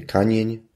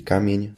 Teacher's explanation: polskie mi bardzo często stawało się ni